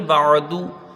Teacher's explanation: با کو عین سے ملا کے جلدی پڑھا جائے گا، بس یہ خیال رکھیں کہ یہاں جھٹکا نہ ہو، بیچ الگ سے ادا کریں گے، بعدو، دال کے اوپر پیش ہے، اس کو جلدی پڑھا جائے گا۔